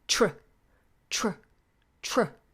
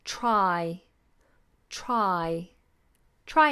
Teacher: your tongue goes from touching the roof of the mouth straight into the curl so you're touching the roof of the mouth with the tip